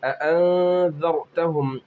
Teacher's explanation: اَأَنذَرْتَهُمْ، اخفا ہوگا اس لیے کہ نون ساکن کے بعد ذال ہے، نون کی آواز کو ناک میں چھپا کر پڑھیں گے۔ ذال را زبر ذر، رائے ساکنہ پر ہوں گی اس لیے کہ اس سے پہلے زبر ہے۔